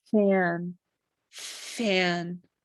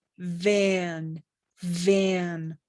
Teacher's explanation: there's no vibration so it's voiceless